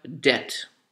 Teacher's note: basically what you're pronouncing is the d the e and the t and you do not pronounce the b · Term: silent b, silent B